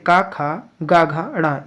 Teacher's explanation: बाकी सभी जैसे क ख ग घ ण ये कंठ से बोले जाते हैं